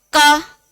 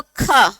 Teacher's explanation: बोलो क, कम हवा निकल रही है, बोलो ख, तो क की अपेक्षा ज्यादा निकल रही है तो ये क्या हो गया, महाप्राण।